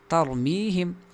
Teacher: را کو پر پڑھا جائے گا کیونکہ یہ تو خود ساکن ہے لیکن اس سے پہلے والا حرف تا کے اوپر زبر ہے. ترمیہم میم کے بعد یا ہے، ترمیہم نہیں بلکہ ترمیہم ہے.